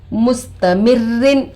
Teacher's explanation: روئے مشددہ کے نیچے 2 زیر آ کر ہے. رو کو باریک کر کے پڑھیں گے.